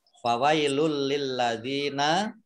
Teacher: Dumah tanwin bertemu dengan huruf lam, bacaan idgham bila gunnah ya, tidak mendengung. Lamnya dibaca double karena ada tasdidnya.